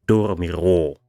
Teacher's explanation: the ro syllable has a lower O, but the first syllable, do, has the higher O, so dormirò, to overpronounce.